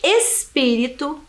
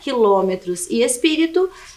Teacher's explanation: que é aquela que tem a penúltima sílaba mais forte e uma palavra proparoxítona que é aquela que tem a antepenúltima sílaba mais forte